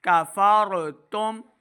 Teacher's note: فا را زبر فا، را ساکن ہے، یہاں پہ را کو ہم نے پر پڑھنا ہے ، کفرتم، تا میم پیش تم، میم ساکن کے بعد اگلا